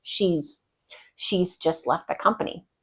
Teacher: you're not going to hear the have and has in full form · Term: contracted have or has